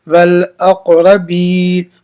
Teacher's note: اب یہ کاف کیا ہے، قلقلہ کیوں حرف قلقلہ کے 5 حرفوں میں سے قا، اس لیے قلقلہ کو اس کی اکو کی طرح پڑھیں گے، والاق را زبر والاقرب با یہ زیر بی یا ساکن سے پہلے زیر آؤ اس لیے یا مدہ ہوگی، یا مدہ کو ایک الف کی مقدار کھینچ کر پڑھے